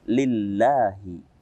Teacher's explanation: Lillahi di sini karena diawali dengan kasrah, Allahnya diawali dengan kasrah, maka kita bacanya dengan tipis.